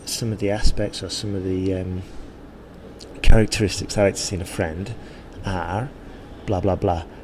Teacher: we've reflected the sentence and we've put a bit of a stress on friend